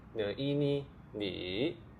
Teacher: Initial is n, no. Final e third tone. n e ni ni which means you.